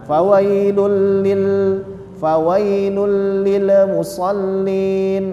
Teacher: itu lam bukan huruf Qalqalah Jadi tidak boleh ada pantulan